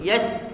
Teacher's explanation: Sin tak ada qalqalah, matikan betul. Yasr. Ada ra, hujung matikan.